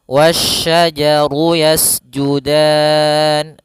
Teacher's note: sebagaimana yang di awal tadi ayat keelim wasajaru yasjudan Yas sifatofirnya sifat mengalirnya nafas atau seperti suara burung dialirkan nafasnya